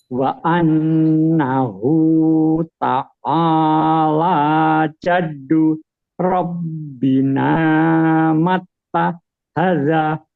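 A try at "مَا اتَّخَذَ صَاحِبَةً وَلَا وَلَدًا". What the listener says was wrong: Bukan taha, kho. Awas. Kho ya kho, jangan ha, enggak boleh. Takho, mat takhoza. Jangan, bukan mato, inta. Sahibatan guna idgham, bukan sahibatau, bukan. Sahibatan wala walada.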